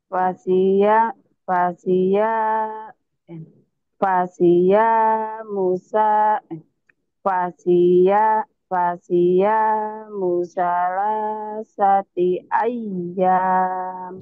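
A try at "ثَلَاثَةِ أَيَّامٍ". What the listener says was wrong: Ayam. Jangan ayah. Ayam.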